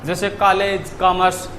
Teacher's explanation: इसका जो उच्चारण है वो आ और ओ के मध्य से होता है, ना तो पूरी तरह आ की तरह होता है और ना ही ओ की तरह होता है, ना तो इसका उच्चारण आ की तरह होता है ना ही ओ की तरह होता है।